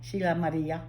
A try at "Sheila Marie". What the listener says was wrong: But you didn't do Maria. It's Sheila Marie.